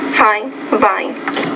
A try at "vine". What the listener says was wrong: No, it's vine. So you got to work on that V sound. So it's more when the V's at the beginning of the word, that's where you need to practice a little bit on that sound.